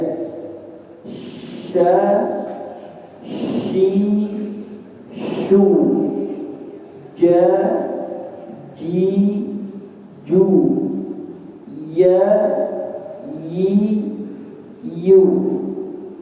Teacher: Di bagian tengah lidah bertemu dengan langit-langit keras, ya, langit-langit atas ya, dan keras. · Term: tengah-tengah lidah